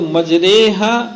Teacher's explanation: پورا فتحہ پورا الف نہیں پڑھنا ہے، کیا اس میں امالہ کرنا ہے، فتحے کو کسرے کی طرف مائل کر کے ادا کرنا ہے